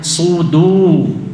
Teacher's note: su tebal, du tipis turun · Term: sod